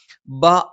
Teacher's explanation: ബ രണ്ട് ചുണ്ടും അടച്ചുവെക്കണം മേലെ ചുണ്ട് അല്പം പുറത്തേക്കും താഴെ ചുണ്ട് അല്പം ഉള്ളിലേക്കും ചേർന്നു നിൽക്കും